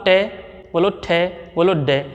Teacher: इन वर्णों को बोलते समय हमारी जीभ की आगे वाली नोक तुरंत ऊपर वाले दांतों के मसूड़ों को स्पर्श करती है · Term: मूर्धन्य